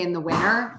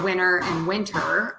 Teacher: sometimes we just drop the T all together like in the word winter you can say in the winter um so winter and winter